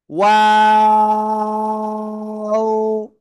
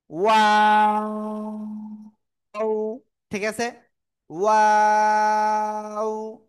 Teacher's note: তো এই অক্ষরটা উচ্চারণের সময় এই দুই ঠোঁট শুরুতে গোল হবে, মাঝখানে দুই দিকে যাবে, আবার শেষে এসে গোল হবে।